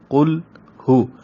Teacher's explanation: ہا پیش ہو یہ اقصی حلق سے